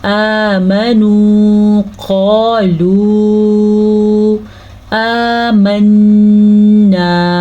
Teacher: قَالُوا آمَنَّا حمزہ کے اوپر کھڑی زبر ہے وہ تو لمبا کیا جائے گا لیکن میم زبر ماں کو ہم لمبا نہیں کریں گے لیکن نون پیش واو نو مدہ ضرور ادا کریں گے